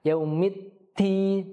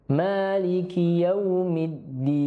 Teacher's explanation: huruf dal kita tidak menghembuskan udara yang banyak ketika mengucapkannya karena ia bisa tertukar menjadi ta. Yaumid ti. Itu kalau kita hembuskan udara dia akan tertukar dengan ta.